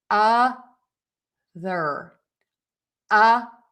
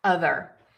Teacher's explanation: my tongue is out and then I pull it in as I make that TH sound